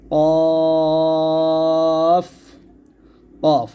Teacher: যখন কফ কফের উপর সাকিন থাকবে তখন কলকলা হবে এরকম কফ কফ মোটা করে মোটা হবে এবং জিহ্বা গোড়া আওয়াজ যার গতি উপরের দিকে থাকবে